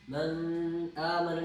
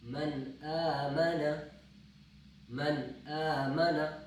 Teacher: تو اب جب اس کے بعد یعنی کہ نون ساکن ہے اور اس کے بعد ایک حرف آ رہا ہے یعنی حمزہ آ رہا ہے، یعنی حروف حلقی میں سے ہے، تو اس وجہ سے یہاں پہ ہم آواز کو ظاہر کر کے پڑھیں گے، یہاں پہ ہم غنہ نہیں کریں گے، ہم اس کو من آمن نہیں پڑھیں گے، من آمن بالکل واضح، نون بالکل واضح پڑھا جائے گا۔ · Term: اظہار